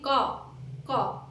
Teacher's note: है, ठीक है, ये पा है, टाइप गलत हो गया। देखिए का जो है वो हमारे कंठ से लिया जाता है